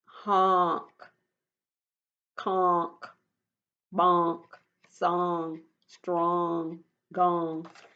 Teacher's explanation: Do you hear ah or do you hear oh? Yes, I mostly hear ah